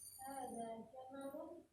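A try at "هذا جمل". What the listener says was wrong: Intonasinya? Intonasinya? Nah, kalau intonasi seperti itu, intonasi apa? Pertanyaan. Nah, hada jamal. Karena memang ini punya orang Arab ya. Kita orang Indonesia, jadi akhirnya gitu ya. Apalagi sebelumnya man hada kan gitu. Terbawa suasana ini. Hada jamalun begitu ya.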